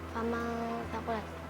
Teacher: Itu ikhfa. Sebab ada nun mati bertemu dengan huruf fa. Dibaca apa? Dibaca samar dan dengung.